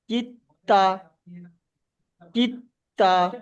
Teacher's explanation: তাসদিদ অক্ষর এসছে। সাকিন অক্ষরের পরে তাসদিদ অক্ষর এসছে, সেই জন্য সাকিন অক্ষর পড়া হয়নি, ডাইরেক্ট কাফটা তায়ের সঙ্গে পড়া হয়েছে। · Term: সাকিন অক্ষরকে পড়া হয় না